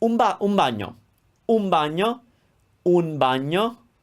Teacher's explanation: B is another sound that makes the n sounds a little bit like a m.